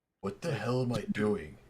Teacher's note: Well, less breathy. He's more baritone. He's He's intentionally dropping his voice down.